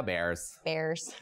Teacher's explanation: a lot of Midwestern accent draws out vowel sounds and makes them a little higher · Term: Chicago accent